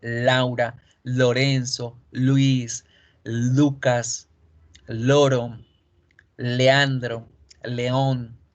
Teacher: la l si usted escoge en el espejo y se mira la l hace que la lengua toque toda la superficie de todos los dientes superiores toda la lengua se expande y toca todos los dientes yo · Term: sonido de la l